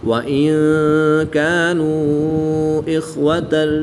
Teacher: واو مدہ کے بعد حمزہ دوسرے کلمے میں ہے تو یہاں پر مد منفصل ہوگی، 2 سے 3 الف تک کھینچ کر پڑھیں گے۔